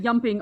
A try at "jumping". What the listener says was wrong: But please pronounce the J.